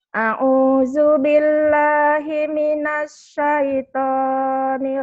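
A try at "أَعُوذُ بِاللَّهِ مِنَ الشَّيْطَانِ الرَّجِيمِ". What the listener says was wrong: bagus, tinggal shin-nya dikeluarin lagi.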